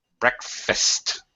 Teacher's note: there's almost a little pause between the K and the F because it's a little bit hard to say KF together.